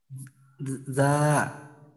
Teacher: জিহ্বার আগা সামনের নিচের দুই দাঁতের পেট ও আগার সঙ্গে লাগাইয়া উচ্চারিত হয়।